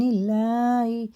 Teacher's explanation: اللہ کا لام زیر سے تو باریک پڑھیں گے